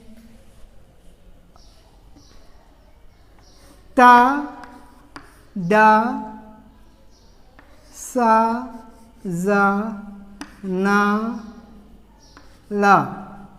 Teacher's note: ta, da, sa, za, na, la. These 6 are alveolar sounds